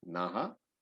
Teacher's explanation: The no has to be understood as naha, na with a visarga.